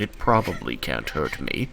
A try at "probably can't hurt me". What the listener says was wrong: No, probably can't hurt me. Emphasis on me.